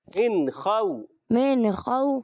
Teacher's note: اچھا خو جو ہے واؤلین ہے، واؤ ساکن پہلے زبر آ گیا، واؤلین نرمی سے پڑھیں گے